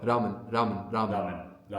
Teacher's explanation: this is the Japanese R, right? So, it's going to be between an R and an L.